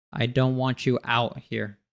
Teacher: out has another glottal T, so we cut off the air at the back of our throat.